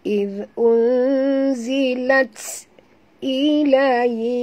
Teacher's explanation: bunyikan hamas pada huruf ta yang mati